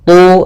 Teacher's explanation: Kemudian nujumu ada mad tabi'i, yaitu dhamma bertemu waw. Tu tebalkan huruf ta karena dia huruf isti'la